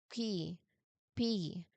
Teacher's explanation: So there is a really really a puff of sound there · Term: letter p consonant sound